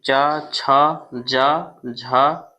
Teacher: च वर्ग होता है तालू